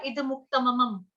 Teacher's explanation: जैसे इद मुक्तम को आपने बोला इद मुक्तमम, मतलब वहां पे आपने 2 म जोड़ दिए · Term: अनुस्वार